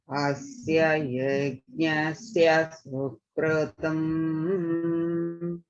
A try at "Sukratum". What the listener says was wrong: Only thing is in Sukratum, it sounds like you're saying kru. It's Sukratum. Sukratum.